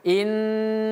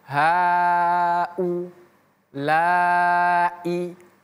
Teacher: U dan I di sini hamzah dan hamzahnya harus dibaca dengan jelas. Jangan sampai innahaulai.